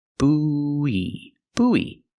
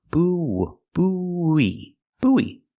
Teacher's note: Make the long oo like food and moon, boo, and then have the long e like green beans, e. Together we link the sounds with the w sound.